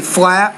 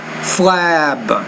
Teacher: When the P is at the end of a word, because it's a voiceless consonant, the vowel sound should be shorter, which precedes it. The B, a voiced consonant sound, when it's at the end of the word, the vowel which precedes it should be longer.